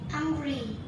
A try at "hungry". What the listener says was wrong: No, not angry. Hungry.